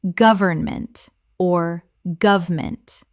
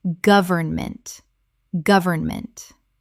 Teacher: 3 syllables in careful speech, often reduced to 2 in natural speech.